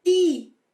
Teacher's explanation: o T, quando tiver o I depois dele, a gente vai colocar a ponta da língua lá encostando no céu da boca